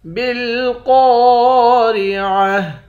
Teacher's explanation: قوف کو موٹا پڑھیں گے، 1 الف کے مقدار کھینچ کر بھی پڑھیں گے۔